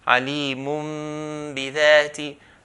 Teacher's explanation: So the hidden Nun is changed into a little Mim. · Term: Qalb